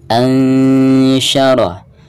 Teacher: suara nun sukun tersebut harus disamarkan disertai dengan gunah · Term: ikhfa